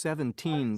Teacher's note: when using these words to talk about quantity time or money stress the second syllable